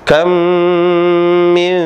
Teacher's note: dengan mim dia punya konsekuensi bukan hanya idgham tapi plus gunah Apa itu gunah suara yang bunyi dari hidung dengan disertai dua harakat